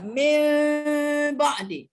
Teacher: dibunyikan seperti ditukar huruf bunyi nun itu kepada huruf mim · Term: iqlab